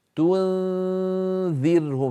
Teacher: ننتقل من التاء إلى مخرج الذال من غير ضغط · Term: إخفاء النون